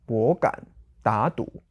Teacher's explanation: So the two units are made up of two third tone words